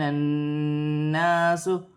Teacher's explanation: نون مشدد میں غنہ ہوگا اور ایک الف کی مقدار کھینچ کر پڑھا جائے گا